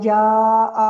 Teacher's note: جاء میں حمزہ پایا جا رہا ہے سبب مد، تو اس کا مطلب یہاں پہ بڑی مد ہو رہی ہے